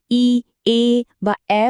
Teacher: ই, এ বা এ বলার সময় দেখুন ঠোঁট দুটো কেমন দুপাশে ছড়িয়ে যাচ্ছে, তাই না? এগুলোকে আমরা বলছি প্রসারিত স্বরধ্বনি।